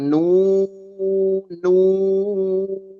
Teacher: nun sukun atau tanwin dibacanya nu ditahan ya ditahan dighunahkan